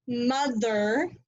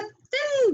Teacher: put together to make one sound remember we've talked about digraphs this particular digraph has two sounds though it has a voiced sound and an unvoiced sound